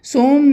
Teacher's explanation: صم دو پیشیں آئی ہیں، دو پیش کے بعد اگر با آ جائے تو یہاں پہ اقلاب کا قاعدہ ہے، یعنی دو پیش کو میم میں بدل کر پڑھتے ہیں